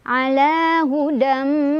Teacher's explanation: Hudam ada idgham bi gunnah karena ada tanwin fathah bertemu dengan huruf mim. Cara bacanya langsung masukkan tanwin fathahnya ke huruf mim. Sambil jangan lupa didengungkan dulu, ditahan dulu.